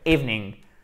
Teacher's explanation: Si vous voulez faire l'accentuation, pas le choix, vous êtes obligé de le mettre sur la première voyelle. Evening. OK, c'est un i long, c'est pas evening, c'est evening.